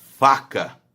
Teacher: o lábio inferior encosta o dente superior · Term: lábio dental